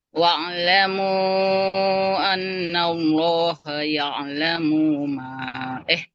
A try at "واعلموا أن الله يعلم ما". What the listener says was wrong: Mimnya nggak boleh panjang.